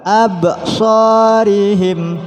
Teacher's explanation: Wa ala absarihim. Absarih ba termasuk huruf yang mempunyai sifat qalqalah. Jadi ada pantulan. Absarihim. Shad satu alif.